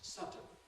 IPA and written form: ˈsʌdən (sudden)